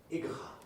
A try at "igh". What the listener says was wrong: Yes, if you tried to sound this out, you would say ig, right? But that's not how it sounds. Yes, it says I. Like the word I, or like these 2 letters also say I, and this says I.